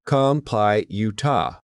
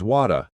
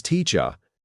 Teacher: don't stress the R at the end. We let it disappear into a soft ah sound. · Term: non-rotic R